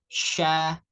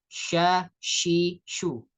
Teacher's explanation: tafashi ini menyebarnya aliran udara di tengah-tengah lidah, ya, di rongga mulut hingga ujung mulut ketika mengucapkan huruf shin